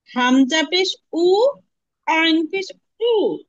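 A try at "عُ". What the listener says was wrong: আপনার একটু কষ্ট হচ্ছে আইনের উচ্চারণ করতে, তারপর চেষ্টা করছেন, আলহামদুলিল্লাহ। আর একটু চেষ্টা করতে হবে।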